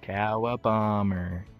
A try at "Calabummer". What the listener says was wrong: Bro, stop saying it like you're fucking sarcastic or shit, bro. I actually mean it.